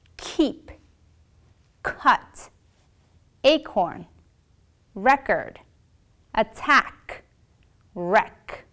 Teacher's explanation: of the mouth to produce simply open your mouth slightly and move the body of your tongues backwards hold and release with a burst of air your vocal folds will not vibrate for this sound